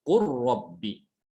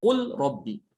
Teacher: Nah, di sini diidghamkan, lamnya diidghamkan ke ro. Dibacanya qur rabbi ya.